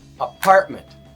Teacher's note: In apartment, a is not strong and ment is not strong. Part is the strong part of that word.